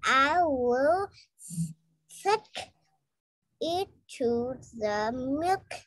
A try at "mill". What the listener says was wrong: Mill, not milk. Mill. M-I-L-L. Mill. Mill. Mill. Mill.